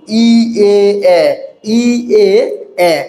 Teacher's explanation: এই এই ধ্বনিগুলো উচ্চারণের সময় ঠোঁটটা কেমন থাকছে, একটু প্রসৃত থাকছে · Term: ঠোঁট প্রসৃত